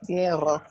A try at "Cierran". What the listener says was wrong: Cierran. Plural, ellos, there's always a n sound at the end. Cierran, cierran.